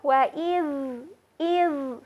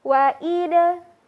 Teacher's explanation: Wa idh, ketika sahabat menemukan huruf zal, kadang ada huruf zal yang dilafadzkan dengan cara bukan dilafadzkan, tapi kadang ada yang keliru ketika membaca huruf zal yang seharusnya dibaca dengan cara mengalirkan suaranya · Namun ada yang kadang tertukar dan membaca huruf dal dengan cara memantulkan